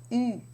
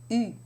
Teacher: instead of having the lips spread, you round them around the tongue